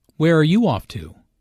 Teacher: Notice the falling intonation since this is an information question, not a yes-no question.